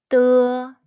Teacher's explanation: It's like the D in the English word star. The Chinese de sound is voiceless. It's different from the D in the English word day, which is voiced.